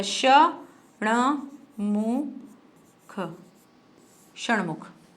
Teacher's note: हम षटमुख नहीं बोलते ना, हम षणमुख बोलते हैं, ण की साउंड आ रही है